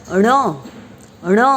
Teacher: न रोल, हमारे आपली जीभ जी आहे ती पुढचा भाग रोल होऊन वर टाळूला चिकटते · ये कहते वक्त हमारे ज़बान का, मतलब जीभ का जो शुरुआती हिस्सा है, जो आगे नुकीला भाग है, वह भाग ऊपर की तरफ गोल होकर हमारी ज़बान में ऊपर की तरफ चिपक जाता है